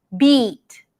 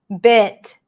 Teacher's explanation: Tense E, beat, lax I, bit